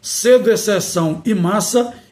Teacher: língua contra os incisivos superiores ativos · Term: linguodentais